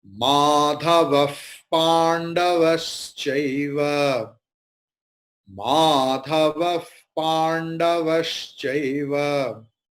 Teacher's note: Visarga is following Pa. So Visarga's pronunciation will be Fakara.